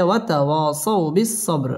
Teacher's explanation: বা কলকলার হরফ ধাক্কা দিয়ে পড়তে হবে